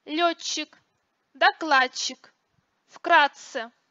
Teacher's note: Произношение в этих случаях долгого твердого «ж» является факультативным. Сочетание зубных «д», «т» и следующих за ними «ч», «ц» произносится как долгие «ч» и «ц».